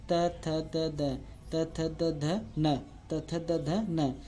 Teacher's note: जिनका उच्चारण दांत को दबाकर किया जाता है, या जिनका उच्चारण करने में दांत आपस में मिलते हैं। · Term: दंत्य